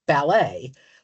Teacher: the American pronunciation has a final syllable stress which is much more like the French